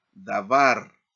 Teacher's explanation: se enfatiza en la última sílaba. bar y a esa se elina la sílaba tónica porque allí recibe el énfasis.